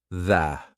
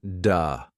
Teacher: Your tongue has to come through your teeth. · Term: th sound